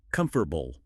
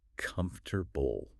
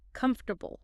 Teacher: It goes from four slow blocks to three fast ones.